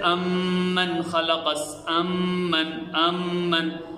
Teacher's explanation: میم کی ادائیگی دونوں ہونٹوں کے خشکی والے حصے سے میم ادا ہوتا ہے۔ دونوں ہونٹوں کا یہ جو خشکی والا حصہ ہے اس سے میم ادا ہوگا، جیسے امن خلقس، امن، امن۔